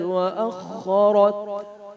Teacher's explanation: خا اور را کو موٹا کریں گے